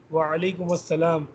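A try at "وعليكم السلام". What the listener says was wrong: جو آپ کرتے ہیں نا وعلیکم السلام مجھے ایسا محسوس ہوتا ہے اکثر کہ آپ میم کے اوپر فتح پڑھ رہے ہیں وعلیکم السلام دمہ پڑھ رہے ہیں مس دوبارہ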